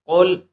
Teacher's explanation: اس قاف کو ہم پر پڑھیں گے، موٹا پڑھیں گے